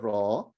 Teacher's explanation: a little too much rolling right on your tongue so less of that rolling